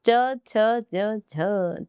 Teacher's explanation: स्पर्श संघर्षी व्यंजन है। स्पर्श संघर्षी वही च वाला जो वर्ग होता है वह स्पर्श संघर्षी होता है।